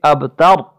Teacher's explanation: با حروف قلقلہ میں ہے، اور را جو ہے حالت ساکن اور ماقبل جو ہے وہ زبر ہے تا پر، اس را کو بھی موٹا پڑھیں گے